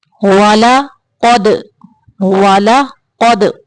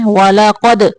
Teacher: قاف کو موٹا پڑھنا ہے اور دال کو کلکلا کرنا ہے